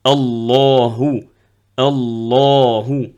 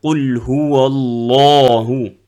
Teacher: la lettre lam quand elle est grave, la, on le trouve que dans le nom d'Allah Azza wa Jal